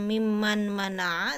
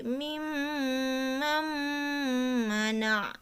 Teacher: nun mati bertemu huruf mim bunyi huruf n-nya langsung dibuang langsung masuk ke huruf mim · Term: idgham